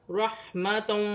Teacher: را مشدد ہے، را کو موٹا بھی پڑھا جائے گا، جماؤ کے ساتھ پڑھا جائے گا